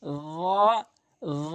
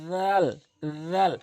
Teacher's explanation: এরপরে আসুন, এই র এবং জাল একই জায়গা থেকে উচ্চারণ, জিহ্বার আগা সামনে দুটি দাঁতের আগা, কিন্তু পার্থক্য হচ্ছে রটা মুখ গোল হবে এবং জালটা মুখ ওসার হবে।